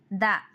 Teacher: శ్వాసం అల్ప ప్రాణం దంత్య స్పర్శం థ శ్వాసం మహాప్రాణం దంతి స్పర్శం ద నాదం అల్ప ప్రాణం దంతి స్పర్శం